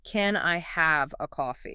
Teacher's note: the document tells the learner to throw all their vocal weight onto the word have.